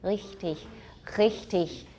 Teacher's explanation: In theory, it's a uvular trill, but it's usually realized as a uvular fricative or uvular approximant, or it's gone altogether after a vowel.